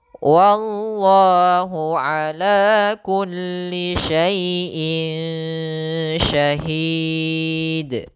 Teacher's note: Ikhfa menyamarkan bunyi 'n' agar terdengar seperti 'ng'. · ikhfa itu menyamarkan suara nunnya menjadi suara seperti terdengar dengan ang